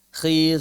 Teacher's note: Kha, ghain, dan qaf ketika kasrah atau sukun sebelumnya kasrah, maka dia berada pada level tafkhim terendah.